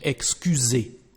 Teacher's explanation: the sound of the letter S here is like a Z actually in French, like a Z, because we've got two vowels, one before, one after. In this case, the letter S, the pronunciation is like a Z, Z in French, excusez.